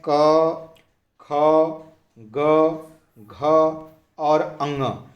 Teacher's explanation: घ जो है क वर्ग का अक्षर है और क वर्ग में जितने भी अक्षर आते हैं क, ख, ग, घ और अंग, इन पांचों अक्षरों का उच्चारण कंठ से होता है